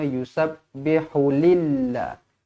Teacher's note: lafzul jalalah dibaca nipis kerana sebelum lafzul jalalah ni huruf lam ni berbaris bawah